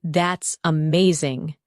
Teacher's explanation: your tone rises with excitement